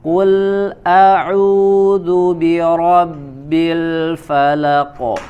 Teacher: huruf qaf dibaca dari aqsal lisan ya, pangkal lidah. Kemudian huruf lam ya, di sini ada huruf lam sukun.